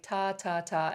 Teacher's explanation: The fundamentals of correct tonguing, which it sounds like you're asking because you are wondering how to tongue correctly, is that your tonguing is in the same position as when you say in English the words ta or da. So the start of ta or da, it's the same thing, uses the tip of your tongue. And I want you to feel the position that it's touching in your mouth.